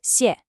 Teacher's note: The first syllable is a sharp, falling fourth tone. Think of a decisive downward chop with your voice.